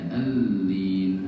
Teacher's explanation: Nah, jangan ditahan di L-nya dalam mendobelkan, tapi al-lin gitu aja.